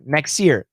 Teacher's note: But like I said, next, we got that S in there, right? That S can cancel the T.